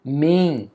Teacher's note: É na aqui ele está acompanhando a vogal, então ele tem apenas o som do e, ó. Mem, tem até a marca de nasalização.